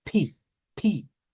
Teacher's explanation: en inglés se le tiene que sumar como una eso se llama H aspirada Entonces es pi pi ve es diferente a decir pi a